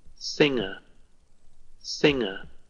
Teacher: this one singer is a little different singer singer no G the G is visually present but not acoustically you cannot hear it